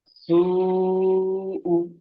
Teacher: হামজার উপরে পেশ এসেছে, পেশটি হলো হারাকাত, হারাকাতের পর তাড়াতাড়ি পড়তে হয়, টান দেওয়া নিষেধ।